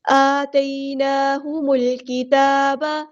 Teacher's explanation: کھڑا زبر آیا، حرکات مد آئی ہے تو ایک الف کے برابر ہم لمبا کریں گے